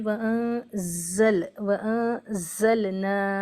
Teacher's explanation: हैं नून साकिन के बाद जा आया है इफा होगा यानी नून साकिन को पढ़ते वक्त जबान की नोक ऊपर के तालू से नहीं लगाएंगे और थोड़ी देर नाक में आवाज को रोकेंगे व जा में आवाज सीटी की तरह अदा होगी व जल